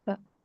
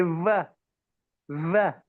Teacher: The letter wow in Arabic, you must turn your lips to say wow. It's not like the German v, when we spread our lips and say v